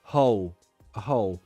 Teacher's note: So, hole would be the dark L.